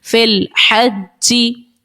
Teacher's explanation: جیم حرف قلقلہ کا مشدد ہے، جماؤ پیدا کیجئے